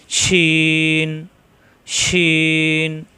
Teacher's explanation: শ্বাস সহজ হবে জিহ্বার মাঝখানে উপরে তালুতে